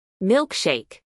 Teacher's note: acentuación en la primera sílaba